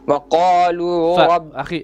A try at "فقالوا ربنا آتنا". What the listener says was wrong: أخي it's فقالوا not وقالوا.